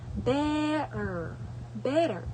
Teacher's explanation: b is a bilabial stop or plosive because both lips come together and briefly block the airflow. · t is an alveolar stop or plosive. It is alveolar because the tongue touches the alveolar ridge behind the upper teeth.